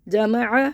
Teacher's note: آ کو حلق سے نکال کے پڑھنا ہے، حلق کو بند کر کے کھولیں